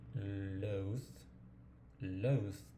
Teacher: Se coloca la lengua debajo de los dientes superiores y se deja como salir una corriente de aire